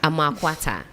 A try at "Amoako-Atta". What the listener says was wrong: No, you said Amoako-atta. You said it like English. You said London style.